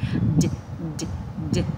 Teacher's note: Cái cách bật chữ d trong tiếng Anh nó hơi nhẹ hơn tiếng Việt một chút này